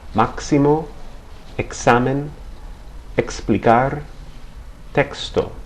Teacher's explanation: In most Spanish words, the letter X has a pronunciation similar to that of the X in the English word taxi or exit, something like a K and an S pronounced together